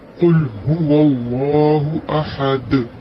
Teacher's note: دال ساکن ہو جائے گا ساکن کی صورت میں یہاں پر کلکلا ہوگا اس لیے آواز کا پلٹانا ضروری ہے